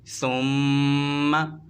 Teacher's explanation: میم مشدد میں غنّے کے ساتھ پڑھتے ہیں، ثم غنّہ کہتے کسے؟ ناک میں آواز لے جا کر پڑھنے کو غنّہ کہتے ہیں